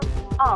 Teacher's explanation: The vowel of O has the characteristic is the back of the tongue is in the fully open position. Lips are slightly rounded. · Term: open vowel